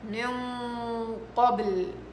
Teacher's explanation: الغنة كيف مفخمة، والوقف على اللام وقبلها مقلقل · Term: الغنة المفخمة